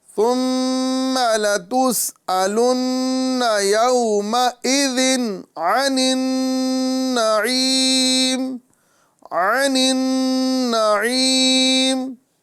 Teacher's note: عین حروف حلقی میں سے آ رہا ہے، لہذا یہاں پر گنہ نہیں کریں گے. اور ساتھ ہی ساتھ یہاں پر نون مشدد آ رہا ہے، لہذا ہم یہاں پر ایک الف کا گنہ کر کے پڑھیں گے. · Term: اظہار